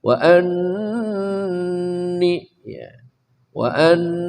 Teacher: Nun musyadadah tajbul ghunah wajib dibaca dengung dua harakat